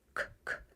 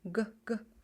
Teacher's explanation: The pronunciation changed from unvoiced k, k to voiced g, g. Voiced sounds means you can feel the vibration in your throat.